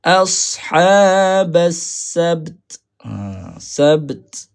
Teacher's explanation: Ta ni ada sifat angin.